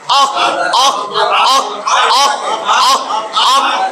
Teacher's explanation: জিহ্বার গোড়া তার বরাবর উপরের তালুর সঙ্গে লাগাইয়া 2 নোক্তাওয়ালা কফ